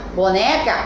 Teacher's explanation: a sílaba tônica é o né